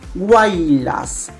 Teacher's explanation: Es la combinación de tres vocales en una misma sílaba. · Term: triptongo